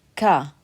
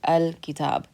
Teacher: when we say kah that's the back of our mouth so that's not the front or mid portion of our tongue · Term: moon letters